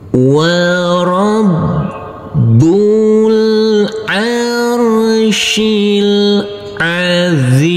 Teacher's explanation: Huruf ba ini kita tekan dan kita tahan saja dengan 2 harokat, langsung masuk ke huruf lam. Huruf alifnya kita anggap tidak ada Dan huruf shin ini juga langsung masuk ke huruf lam.